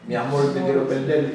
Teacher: aquí o R final pronunciase L, como fan o español das Antillas